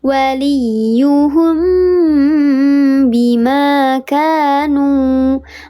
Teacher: Kalau ikhfa syafawi mim mati bertemu dengan huruf ba. Dibacanya disamarkan disertai dengan gunnah 3 harakat lebih utama.